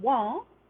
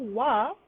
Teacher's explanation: a nasalized vowel is something like an as opposed to a, where a little bit of the sound, the air is released through the nasal passage. So if you say this word wan in Kala, it means canoe.